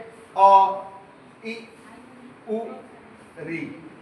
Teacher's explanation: छोटी इ छोटा उ और ऋ चार जो है ह्रस्व स्वर है। इनके उच्चारण में कम समय लगता है।